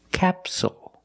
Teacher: the stress is on the first syllable so the second syllable is short it's not capsule it's capsule with a dark L at the · It's not capsule, it's capsule, with a dark L at the end